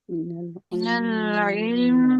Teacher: میم کو زیادہ ٹائم دے، لام کو اتنا زیادہ ٹائم نہ دے.